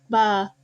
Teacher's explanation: a co-articulated labial velar articulation